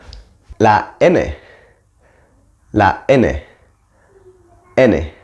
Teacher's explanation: the tongue against the ridge behind the top teeth bloke the mouth completely voice out through the nose that famous